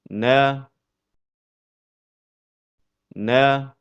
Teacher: Huruf nun keluar dari pertemuan antara ujung lidah dengan gusi bagian atas.